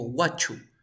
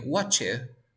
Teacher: Recuerda que la T y la Y se transforman en una che.